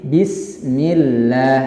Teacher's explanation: Jika berbaris kasrah menjadi lamnya tipis